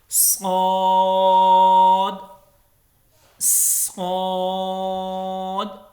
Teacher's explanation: اس کے بعد جو لیٹر ہے صاد، صاد بھی بالکل سین کی طرح اس میں سیٹی کی آواز آئے گی، صاد، صاد، اور اس کو بھی 3 سے 5 الف کے برابر لمبا کرنا ہے، اور اس کو پر پڑھنا ہے، موٹا پڑھنا ہے، اور اس میں سیٹی کی بھی آواز سٹارٹ میں ہونی چاہیے